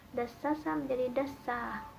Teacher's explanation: Disimulasi langsung contohnya kata dasasa yang berubah menjadi dasa, seperti dalam Al-Quran itu waqad khaba man dassaha, itu aslinya dari kata dasasa. Nah, huruf sin yang kedua ini berpengaruh kepada huruf sin yang ketiga, sehingga huruf sin yang ketiga ini berubah menjadi alif, alif dasa gitu.